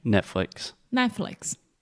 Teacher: we kind of have that very quick rising intonation and then it falls down at the end